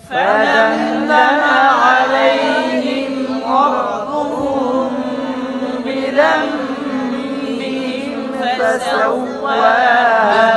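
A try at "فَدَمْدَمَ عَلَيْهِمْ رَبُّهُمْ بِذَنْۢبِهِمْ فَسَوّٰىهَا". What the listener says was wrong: আপনি মানে একটা হরফে আরেকটা হরফের মধ্যে ঢুকায় না, আমরা র উচ্চারণ করতে গিয়ে মিমটাকে রর ভিতরে ঢুকাই দিচ্ছি, এটা যেন খেয়াল থাকে।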